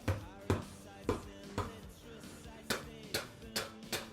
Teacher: That could be your lips, bilabial stop. So this is pushing both of your lips together and pushing air out of them, and then releasing the lips and pushing air through at the same time. So that air comes out of them and makes a sound, like.